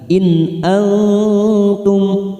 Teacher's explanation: nun sukun bertemu Hamza kita baca jelas Idhar halq